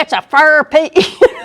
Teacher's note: the tendency of Southerners sometimes to say fur for four